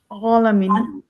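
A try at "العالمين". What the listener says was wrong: না, হয়ে যাচ্ছে, মুখটা গোল হয়ে যাচ্ছে, মুখটা মুখটা খোলাই থাকবে, আলামিন। না, আপনার উচ্চারণটা অনেকটা স্বরে হয়ে যাচ্ছে। আমি স্বরে করেন, মুখটা খুলতে হবে, আলামিন।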